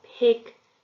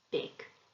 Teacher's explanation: a quiet sound like a p TK becomes loud B DG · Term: voicing